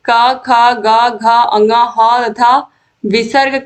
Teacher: क वर्ग का उच्चारण कंठ से होता है।